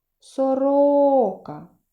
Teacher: так три А тепер визначимо наголошений склад уявно покличемо сороку Сорока який склад я вимовляла голосніше другий